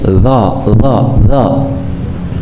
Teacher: mengucapkan huruf do yang pertama ada di antara kita membacanya tipis d d do banyak udara keluar